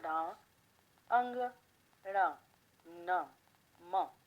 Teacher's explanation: ये नासिक्य व्यंजन कहलाते हैं, जो नाक से बोले जाते हैं